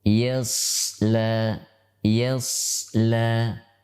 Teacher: Ditinjau dari pangkal lidah, maka huruf shad termasuk huruf isti'la, di mana dia huruf yang tebal. Pangkal lidah diangkat.